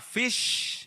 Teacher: F-nya itu sebentar itu unvoiced, kemudian I-nya voice, kemudian S-nya lama nih unvoiced-nya